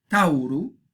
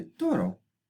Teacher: el diptongo ao se hace o. Por lo tanto, tauru, el animal, se hace finalmente toro.